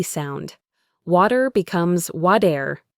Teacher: When a t is between two vowel sounds, it turns into a soft d sound. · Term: flapped